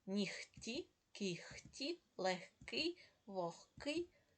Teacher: в українській мові є слова в якіх дзвінки приголосні перед глухими вимовляються як парні глухі